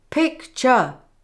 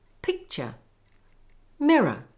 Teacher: We make the first syllable strong and the second weak